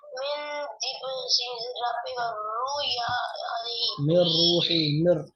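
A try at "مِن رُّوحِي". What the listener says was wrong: मिर रूही या वल्लल्लाह मिर रूही मिन नहीं है मिर। रा पढ़ेंगे, नून नहीं पढ़ेंगे, रा पढ़ेंगे। इदगाम बिला गुन्ना होगा। इदगाम इदगाम बिला गुन्ना, इदगाम बिला गुन्ना, इदगाम बिला गुन्ना।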